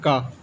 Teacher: कंठ अघोष अल्पप्राण में आता है क